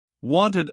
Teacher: after a t or d sound specifically like in wanted or needed, the ed gets its own extra syllable.